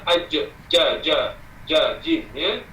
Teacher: jim, dia pergi atas tengah lidah. Ja, jim, ya, atas tengah lidah.